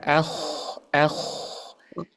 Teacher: enggak ada getarannya di bagian kho sukun itu